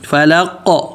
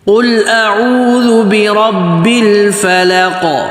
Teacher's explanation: آگے بی بالکل واضح اور را موٹا، را کے اوپر زبر یا پیش ہوتا ہے تو را موٹا پڑھتے ہیں، اور با کے اوپر آگے تشدید ہے تو اس کو پکڑنا ہے، برب فلق، فا پتلا فا اور لام بھی پتلا لا، فلا۔ آگے قاف موٹا اور قاف پہ قلقلہ کرنا ہے۔ قلقلہ مطلب یعنی آواز کو ہلانا ہے، آواز کو جیسے دیکھیں فلق اس طریقے سے، تو قاف پہ قلقلہ ہوگا۔